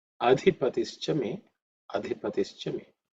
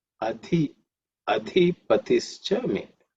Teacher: the second letter, adhi, is the fourth letter in the tha varga, so it has to be aspirated